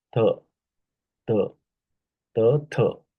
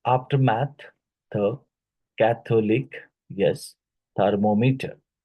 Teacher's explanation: the dental fricative sound th